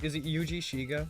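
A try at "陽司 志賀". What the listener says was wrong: Yoji. Yeah, when it's O-U, it's basically just extending the O sound.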